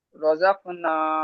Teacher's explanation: রয়ের উপর জবর বা পেশ হলে রকে পুর করে পড়তে হবে